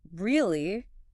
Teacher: If you say Really? with a high, sharply rising pitch at the end, it indicates genuine surprise or request for confirmation.